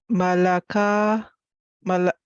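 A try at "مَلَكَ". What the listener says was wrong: Malaka. Malaka. Malaka. So the ka, we will have to increase. Malaka. Malaka.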